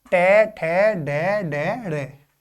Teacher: जो जीभ है उसकी उल्टी हुई नोक का निचला भाग मूर्धा से स्पर्श करता है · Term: मूर्धन्य ध्वनि